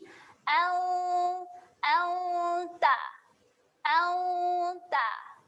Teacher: Makhraj huruf ta ialah hujung lidah, saya ringkaskan, hujung lidah bertemu belakang gigi atas.